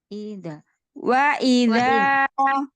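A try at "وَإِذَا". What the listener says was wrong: Pendekkan. Ya, jangan terlalu panjang.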